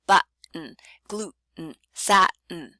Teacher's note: Glottal stop, on the other hand, it doesn't sound like a D. It's just chopping off the first vowel by narrowing the glottis, very quickly chopping this vowel off by closing the glottis.